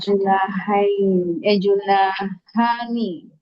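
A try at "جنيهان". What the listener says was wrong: Nah, Junai ya. Jangan Juna. Junai. Ke-i. Junaihani. Junaihani.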